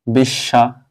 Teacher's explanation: বোঝানো যায় বোঝা না গেলে নিচে লিখে দিচ্ছি [মিউজিক] বিষ শ্বাস দেখো এখানে স এর সাথে ব আছে স দুইবার উচ্চারণ হবে